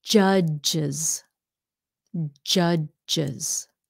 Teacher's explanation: s also sounds like a z when the root word ends in a strident or hissing sound